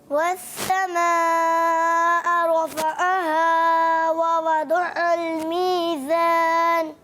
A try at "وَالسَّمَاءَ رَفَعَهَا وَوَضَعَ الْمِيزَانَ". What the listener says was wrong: اچھا عین میں تھوڑا مسئلہ آ رہا ہے آپ کو اور تھوڑی پریکٹس کرنی ہے، تو پریکٹس کریں گے تو صحیح ہو جائے گا. عین کیا؟ عین. اور زور. عین. جی ہاں، تھوڑا حلق کو دبائیں گے نا اپنے پریشر سے، اپنے ایک پریشر دینا ہوتا ہے. عین، جیسے میں ہاتھ کو دبا رہا ہوں، عین عین، تو ایسے ہی آپ حلق کو تھوڑا سا دبائیں. عین کریں.